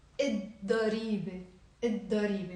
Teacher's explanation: We will not pronounce the lam.